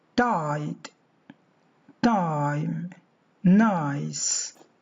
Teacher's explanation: There is the sound I at the middle of each word. This diphthong begins with an open vowel which is between front and back.